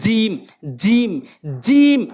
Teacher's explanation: জিহ্বার মাঝখানের অংশটা উপরে তালুর সঙ্গে লাগবেন। জিম জিম জিম এভাবে উচ্চারণ করবেন।